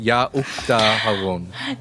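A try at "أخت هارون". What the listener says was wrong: That's not how the guttural sounds sound in Arabic.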